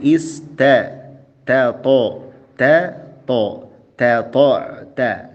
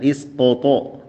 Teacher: huruf ta jelas dan jaga tipisnya. Jangan ke bawah tebal oleh huruf to.